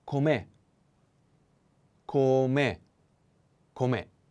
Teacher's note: The accent is on the e.